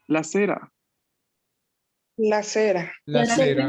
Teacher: Y aquí es la misma E del español. No es tan abierta ni tan cerrada, es simplemente una E media